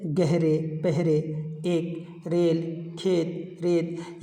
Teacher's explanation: या मजहूल की आवाज़ जो होती है वो सादा होती है, उसे खींच करके नहीं पढ़ा जाता